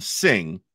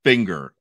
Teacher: NG is one sound in sing the sound and it's two sounds in finger